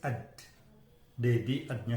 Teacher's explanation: Berarti bunyi saya itu wajib alveolar, plosive, voice